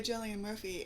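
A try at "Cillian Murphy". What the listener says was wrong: Cillian Murphy, not Julian Murphy. It starts with a C, not a J. Chillian. I thought you said Jillian.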